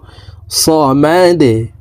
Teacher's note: দালকে নিচের দিকে ধাবিত করে ধাক্কা দিয়ে সাকিন করে ফেলবো